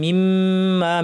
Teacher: মিমের উপর তাসদীদ লম্বা গুন্না